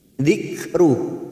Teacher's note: Dzikru, ada huruf kaf sukun. Saat diwakafkan maka sifat dari huruf kaf sukun ini mempunyai sifat hamas.